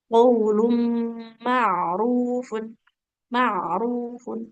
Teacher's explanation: huruf ain itu punya sifat mengalir suara tapi yang pertengahan ya. Maka pastikan suaranya tetap mengalir.